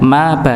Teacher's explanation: Ma dan ba satu tempat bibir syafatan ya dua bibir yang bertemu